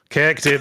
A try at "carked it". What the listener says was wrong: That sounds like you're saying you cacked it.